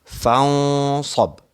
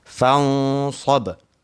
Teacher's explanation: Nun bertemu dengan sad. iaitu hukumnya ikhfa hakiki dan mesti ditebalkan sebelum bertemu dengan sad tu.